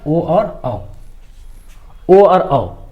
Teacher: जिन वर्णों का उच्चारण जो है कंठ और ओष्ठ दोनों की सहायता से उच्चारित होता है उसको हम लोग कंठोष्ठ्य वर्ण कहते हैं। तो इसके अंतर्गत क्या आ गया, ओ और औ।